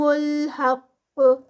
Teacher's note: قاف کا اینڈ پہ کلکلا ہوگا اور قاف ہیوی بھی پروناؤنس ہوگا